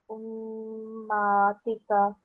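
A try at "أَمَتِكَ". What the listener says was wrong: Okay, I may have misheard you, but there's a fatha on top of the ayn, so it becomes ammatika. Again, there's a vertical fatha on top of the mim shaddad, so that gets extended for about 2 seconds, okay? Ammatika.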